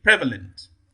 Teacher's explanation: There, the primary stress falls on the first syllable, prevalent.